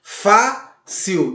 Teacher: A sua sílaba tônica está na penúltima sílaba. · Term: paroxítona